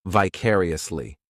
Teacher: This adverb has 5 syllables, and the stress is on that second syllable